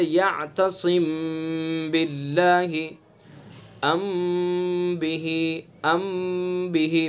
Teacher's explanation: میم ساکن کے بعد اگر با آئے گا تو اخفا ہوگا، اس میں بھی غنہ ہوگا، اظہار بھی جائز ہے اس کے اندر، مگر اخفا ہی بہتر ہے، جیسے یعتصم باللہ، ام بہ، ام بہ، میم ساکن ہے اور اس کے بعد با ہے، ٹھیک ہے۔